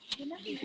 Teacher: वकार से दंत ओष्ठम, वा का उच्चारण स्थान दंत और ओष्ठ दोनों है। एक मात्र एक ऐसा व्यंजन है जो संयुक्त भी नहीं है, उसका उच्चारण स्थान दो है।